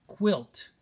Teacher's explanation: q u says a k and w sound put together so u in this situation isn't even being used as a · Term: q u blend